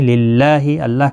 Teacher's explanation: اللہ کا لام باریک پڑا جائے گا اس زیر کی وجہ سے، اس کے اوپر کھڑی زبر بھی ہے، ایک الف کی مقدار کے برابر کھینچ کر پڑھیں گے۔